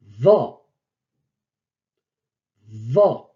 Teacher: Je pince le bout de la langue et je pousse plus fort l'air et je fais vibrer un peu plus. Va. C'est le va de l'anglais.